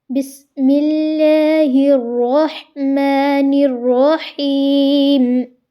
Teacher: سین میں سیٹی کی آواز آئی